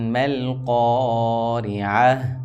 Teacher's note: گولتا آئی ہے، اس وجہ سے ہم نے ہا کی آواز دینی ہے اس کو وقف کی صورت میں.